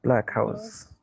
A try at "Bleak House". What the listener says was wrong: Not black. This is Bleak House. Bleak House. Bleak House.